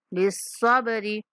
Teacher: با پہ کلکلا کریں گے اور را کو کھینچنا نہیں ہے